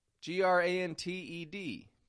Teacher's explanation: Now that T is a vanishing T. We find those when N and T are unstressed in the middle of a word.